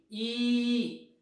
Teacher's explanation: Close, एकदम वर येते जीभ आपली. ई, वरच्या भागात जाते जीभ, आपल्या वरच्या भागाला जणू लागणार आहे असं वाटायला लागतं.